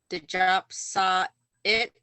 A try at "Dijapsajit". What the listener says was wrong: I'm not hearing kind of so the C, it sounds like a J. So Dijapsajit.